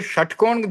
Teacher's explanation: षट्कोण का जो श होता है यह मूर्धा से उच्चारण होता है। मूर्धन्य श बोला जाता है।